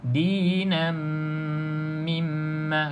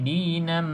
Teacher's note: dengungnya dengan kita tutup bibir atas, bibir bawah dengan rapat.